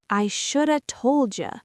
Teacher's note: should have becomes shoulda, and told you becomes told ya.